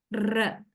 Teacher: So in the production of a trill, we can see the active articulator, that means the tip of the tongue, right, is vibrating. A rapid vibration is there. R, right? You can feel it, of course.